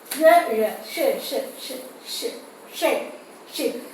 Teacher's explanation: You can see the tongue is a bit rolling upward towards the palatal. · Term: Palato-alveolar sound